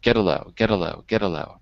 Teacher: The T on get becomes a D in American English.